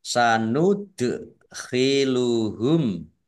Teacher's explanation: Dal sukun bacaan kolkolah dibaca memantul ditampakkan pantulannya